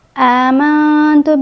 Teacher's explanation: حمزہ کے اوپر کھڑی زبر ہے، یہاں 2 کاؤنٹس آئیں گے۔ میم کو نون کے ساتھ ملائیں گے، غنہ کریں گے، یہاں پر نون ساکن کے بعد تا ہے، حروف اخفاء میں سے ہے، یہاں اخفاء ہوگا، اخفاء ترقیق ہوگا کیونکہ اس کے بعد باریک حرف ہے۔